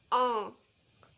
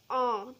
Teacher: नोज और mouth दोनों से साउंड आ रही है दोनों से वॉइस आ रही है और इसमें जो आपका माउथ है वो पूरा ओपन हो रहा है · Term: चंद्र बिंदु